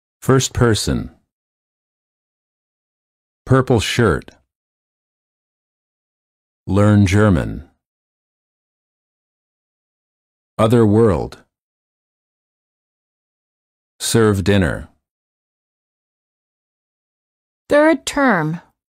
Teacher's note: the lips are slightly rounded, the tongue is tense and at a mid-level position, and the tip of the tongue is curled up and pulled back.